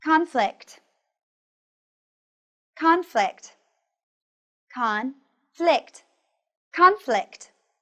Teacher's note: Pay attention to the ending sound kt and the stress on the first syllable.